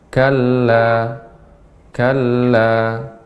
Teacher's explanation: berhenti di kalla, maka baca 2 harokat saja. Kalla, kalla, atau kalau disambung dibaca 4 harokat.